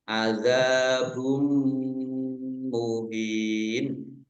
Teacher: mim tasdid dibaca ghunah atau mendengung ditahan dua harakat · Domah tanwin bertemu dengan huruf mim, idgham bi gunnah masuk dengan mendengung, yaitu mendengung mim ditandai mimnya ada tasdidnya. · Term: idgham bunah